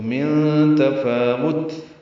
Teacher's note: من تفاوت، نون ساکن کے بعد تا آنے کی وجہ سے اخفا ہے، نون ساکن کے بعد تا آیا اس لیے نون کی آواز چھپائیں گے